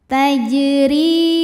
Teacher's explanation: jim dipantulkan dengan pantulan yang kecil. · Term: qalqalah sughra